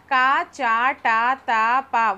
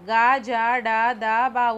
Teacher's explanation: క చ ట త ప ఊది పలకట్లేదు